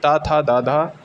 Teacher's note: जो त थ द धा न जो होता है वो भी दंत वर्ण होता है